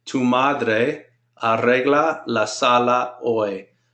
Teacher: Notice I'm rolling the R's because there's 2 of them. That R I don't roll.